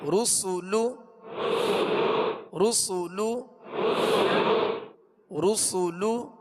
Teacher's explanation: را پر پڑھیں گے، سین کو سیٹی کی آواز میں باریک پڑھیں گے